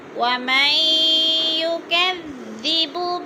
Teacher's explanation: نون ساکن کے بعد یا مشدد ہے، سختی سے جما کر پڑھیں گے، ادغام کریں گے